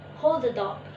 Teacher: hold the dog, the phoneme d is elided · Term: elision